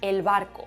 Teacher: al pronunciarla los labios se juntan se aproximan pero no llegan a tocarse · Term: bilabial aproximante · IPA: [el.β˕ar.ko]